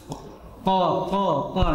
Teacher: tempat keluarnya dari lidah paling belakang paling belakang qo di qo itu sampai lidah saja tidak sampai tenggorokan qo koo koo ng tapi sampai lidah